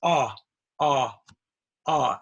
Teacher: Very open, tongue is back a little.